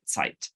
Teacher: this voiceless alveolar affricate